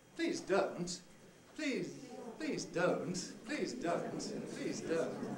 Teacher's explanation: this falling head starts on a high pinch and falls